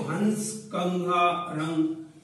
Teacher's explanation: अनुस्वार जो होता है वह जो उच्चारित होता है वह नाक से होता है